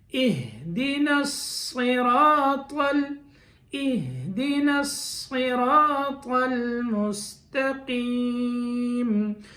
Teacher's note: خاص خیال رکھیں اہدنا، اہدنا نہیں پڑھ لینا کہیں. یہ ہا بالکل حلق کا جو آخری حصہ ہے سینے کی طرف والا وہاں سے نکلتا ہے